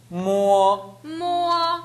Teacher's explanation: 입술에서만 모 하지 말고 비음이 나야 됩니다.